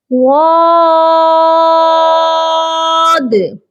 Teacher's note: Last میں جو دال ہے اس پر آپ کی آواز تھوڑی باؤنس ہونی چاہیے، جس کو کہتے ہیں قلقلہ۔ آپ نے تھوڑا سا یہاں پر قلقلہ بھی لازمی کرنا ہے، د کی آواز آئے گی، غاد۔